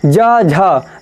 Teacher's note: आपके ध्वनि जो निकल रही है उसके साथ एक गूंज निकल रही है